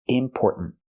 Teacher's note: The tongue goes up and makes a stop T at the end.